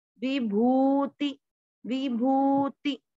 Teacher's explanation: आपको भू की मात्रा को लंबा खींचना है, वापस ती को छोटा करना है